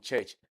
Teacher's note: it is represented by the combination of the T sound and the sha sound. So we call it cha you have in church that is voiceless postola africate.